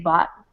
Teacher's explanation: I usually leave the T off I usually don't say the T